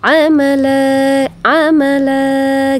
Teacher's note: di sana ada huruf yang bertanwin bertemu dengan alif ya jadi fathatain itu berubah menjadi Fatha ya Kenapa karena dia bertemu dengan alif di sana maka panjangnya dua harakat atau dua ketukan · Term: mad Iwat